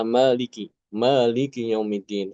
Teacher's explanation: Mimnya dibaca panjang pada kata Maliki